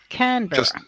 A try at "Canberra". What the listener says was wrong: that's because of your accent. You have troubles pronouncing the E.